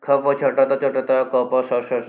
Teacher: पांचों वर्गों के पहले और दूसरे वर्ण और तीनों प्रकार के श, इनका जो बाह्य प्रयत्न कौन सा है, विवार, श्वास, अघोष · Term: विवार, श्वास और अघोष